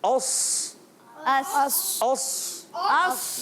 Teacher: صاد میں ہونٹ گول نہیں کریں گے